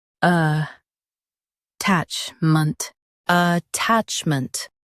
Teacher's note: Emphasize tach and keep ment soft.